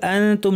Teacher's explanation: ওয়া আনতুম, হামজা শক্ত হবে, আনতুম নুন সাকিন পর তা ইখফা করতে হবে, জিহ্বাকে তায়ের মাখরাজ, অর্থাৎ উপরের দাঁতের গোড়ায় কাছাকাছি নিয়ে লাগাবো না, নাক থেকে গুন্না। ওয়া আনতুমু, তুমু মিমের উপর তাসদীদ লম্বা গুন্না।